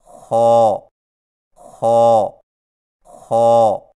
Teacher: خا کی ادائیگی میں زبان کی جڑ کو تالو کی طرف بلند کرتے ہوئے موٹی آواز میں پڑھیں، یعنی خو خو خو۔